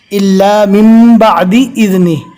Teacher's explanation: یہاں پر مین نہیں پڑھیں گے، جزم والے نون کے بعد اگر با آتا ہے تو جزم والے نون کو میم سے بدل دیا جاتا ہے